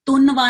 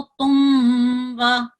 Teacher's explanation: नाक से आवाज निकाल के वाव में दाखिल करते हैं आवाज को